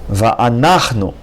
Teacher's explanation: The accent is on a third syllable, not on the last syllable.